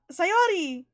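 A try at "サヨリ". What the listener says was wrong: No, Sayori. Sayori. Sayori. Emphasis put on the first syllable. Sayori. So not Sayori, it's Sayori. Sayori. Sayori.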